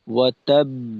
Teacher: যেহেতু এখানে ডবল বা, তো সেক্ষেত্রে দুইটা বায়ের সমপরিমাণ সময় এখানে পাবে। সুতরাং সেক্ষেত্রে হবে ওয়াতাব, এইভাবে।